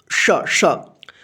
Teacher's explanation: जीभ जो है ना तालु में सटता है तब इसका उच्चारण होता है दोनों का श श, और इसका जो है ना जीभ दोनों दांत के बीच में आता है तब इसका साउंड निकलता है स स। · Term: तालव्य श